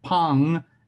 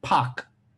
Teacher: one ends with the nasal and ones with a stop